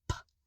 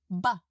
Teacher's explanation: So hold a tissue at the lips, the P will make a puff, and the B won't